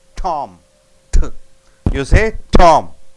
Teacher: There is a sharp burst of air over the tip of the tongue.